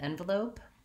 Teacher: in envelope, you want to stress that first syllable and go light and short on the second two